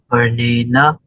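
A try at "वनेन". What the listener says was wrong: Vanena, normal na. Normal na. Try with the normal na. You don't have to put extra effort. Again, watch out for that na.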